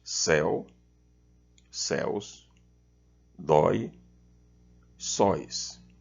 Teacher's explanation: vejam que são monossílabos com ditongos abertos